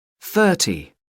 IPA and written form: ˈθɜː(r)ti (thirty)